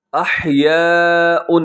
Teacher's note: جو مد ہے بڑی مد متصل واجب، آپ اسے 4 سیکنڈ تک لمبا کیجیے گا